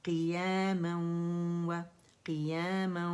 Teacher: تو اس وجہ سے کیا ہوتا ہے کہ غنہ باہر رہ جاتا ہے. تو اس کے ادائیگی کا طریقہ ہے کہ مشدد واو کے اوپر ہم نے جو پہلا ساکن ہے واو کا اس پہ ہم نے غنہ کرنا ہے اور دوسرا واو پراپرلی ہم نے فرملی ادا کرنا ہے، ٹھیک ہے. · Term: ادغام ناقص